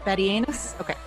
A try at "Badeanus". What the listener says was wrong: No, don't say anus.